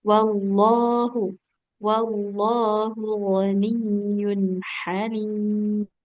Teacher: lafaz Allah nggak boleh panjang huruf A-nya. Yang panjang lamnya ya.